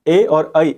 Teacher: वो दोनों के दोनों हमारे कंठ तालव्य से बोले जाते हैं